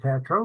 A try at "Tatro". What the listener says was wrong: It's pronounced Tatro with a long A.